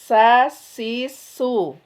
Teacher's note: beda dengan sin tipis sa si su lebih rileks lebih ringan seperti apa seperti tersenyum gitu ya kalau huruf-huruf tipis seperti tersenyum sa si su.